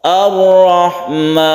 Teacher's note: Lam ta'rif atau alif lam di sini bertemu dengan ro disebut idgham syamsiyah, langsung ditasydidkan ke ro.